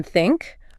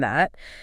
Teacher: Well, native speakers make that th sound pretty smoothly, whether it's the soft one in think or the more buzzy one in that. The common mistake is swabbing it for a t or maybe a d or s sound.